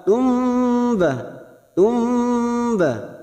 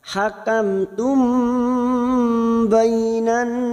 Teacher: samarkan bibir masuk pada huruf ba, tumba, tumba, dan ditahan selama 3 harokat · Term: ikfa safawi